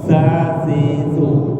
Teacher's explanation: Za ujung lidah bersentuhan dengan ujung gigi atas.